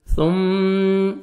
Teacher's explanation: ثم کو نرمی سے ادا کرنا ہے اور میم مشدد ہے، غنہ کریں گے